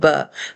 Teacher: ہمارے ہونٹ کا نمی والا حصہ جب ملتا ہے ہم پڑھتے ہیں ب، اب میں اس پر زبر زیر پیش جب لگا لیتی ہوں ب بی بو، ب بی بو، تلفظ چینج ہو گیا۔